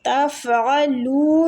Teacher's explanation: تَفْعَلُونَ، فا پہ قلقلہ نہیں ہونا چاہیے، عین حلق سے نکلے گا، وسط الحلق مطلب درمیان والا حلق کا حصہ۔ تفعلوا، لو کے آگے وہ مد ہے، لو کو کھینچیں گے۔